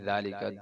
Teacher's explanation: آگے ذالکہ میں ذال ہے، اس کو زا پڑھ دیا جاتا ہے، ذالکہ نہیں، ذالکہ دو دانتوں کے درمیان زبان نکالنے سے ادا ہوتا ہے